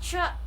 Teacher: is a fricative voiceless pharyngeal